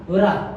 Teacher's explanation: रा, रा आपका होता है लुंठित वर्ण